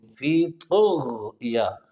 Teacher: طا کو بھی آپ نے موٹا پڑھنا ہے، غین کو بھی موٹا پڑھنا ہے ، اور طا کو موٹا پڑھ کے تا والا مخرج استعمال